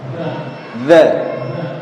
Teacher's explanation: Punggung ujung lidah ditemukan dengan ujung gigi seri bagian atas. Nah, jadi ujungnya agak muncul. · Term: huruf dzal